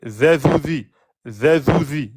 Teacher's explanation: Voilà la particularité de la lettre zel. Okay, c'est une lettre où on met la langue entre les dents, comme la lettre sa, on fait vibrer, z, et sinon c'est une lettre amincie, comme pour le del.